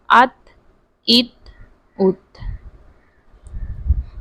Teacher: ہم نے اس کو وہیں پہ اینڈ پر اس کی آواز روک لی ہے، ہم نے اس کو باریک پڑھنا ہے